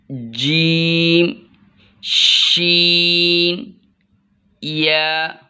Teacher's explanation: ज़ुबान के बीच ऊपर वाले तालु के साथ लगाकर जीम शीन या अदा होते हैं।